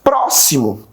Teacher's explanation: o pró de próximo também é pronunciado com mais força. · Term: proparoxítona